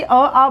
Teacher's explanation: आप जैसे ही अ आ बोलोगे तो जीभ कंठ से सक्रिय है। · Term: कंठ्य स्वर